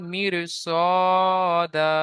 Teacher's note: আলিফ মাদ্দাহকে একালিফ পরিমাণ টান দিয়ে পড়তে হবে · র সাকিনের পূর্বে জের এসেছে, র বারিক হওয়ার কথা ছিল, কিন্তু পরে হুরুফে মুস্তালিয়ার মধ্য থেকে সদ আসার কারণে র আর বারিক হবে না, র কে পুর করে পড়তে হবে